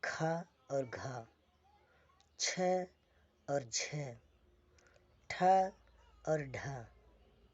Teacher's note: प्राणत्व के आधार पर जो दूसरा भाग है महाप्राण, प्रत्येक वर्ग का दूसरा अक्षर और चौथा अक्षर महाप्राण होते हैं।